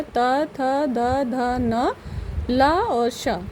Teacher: जब हम इन वर्णों को उच्चारित करते हैं, इनका उच्चारण करते हैं, तो ये सीधे जो हमारी जीभ है, हमारे मुख के ऊपरी हिस्से की तरफ जो दांत होते हैं, मसूड़े जो होते हैं, उनको टच करती है, यानी स्पर्श करती है, छूती है। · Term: दंत वर्ण